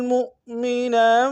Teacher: میم کو حمزہ کے سامنے لائیں گے، یہ حمزہ بشکل واو ہے، جھٹکا دیں گے